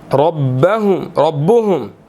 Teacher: یہاں پر را جو ہے وہ ہم نے اس کو موٹا ادا کرنا ہے، اس کے اوپر زبر ہے، ٹھیک ہے. اور ہم، میم ساکن ہے، یہاں پر اخفا ہوگا.